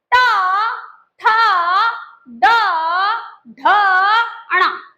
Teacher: जब आप इनको बोलेंगे तो जिभ्या उल्टी हो रही है और फिर एकदम से पटकी खा रही है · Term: मूर्धन्य वर्ण